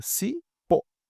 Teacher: O pó é mais forte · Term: oxítona